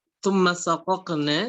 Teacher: ada huruf qaf dan bertemu dengan huruf yang sama, maka kemudian dia diizharkan